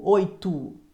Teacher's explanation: E 4 fonemas: oito. Quando você pronuncia a palavra oito, esse O final tem som de U, oito. Essa palavra possui 2 vogais, O e O, e uma semivogal, I.